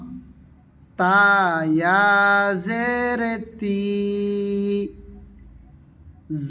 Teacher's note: আগা সামনের দাঁতের গোড়া থেকে আদায় করিবে পাতলা করে